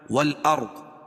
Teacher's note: رائے ساکنہ سے پہلے زبر یا پیش ہو تو را پور پڑھی جائے گی، اور ضاد کو پور پڑھیں گے